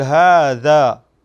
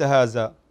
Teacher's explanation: تخرجها ذال وليست زاي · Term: الذال